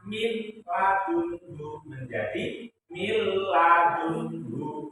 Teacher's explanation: memasukkan suara nun mati atau tanwin ke huruf ro dan lam tanpa berdengung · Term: idgham bila guna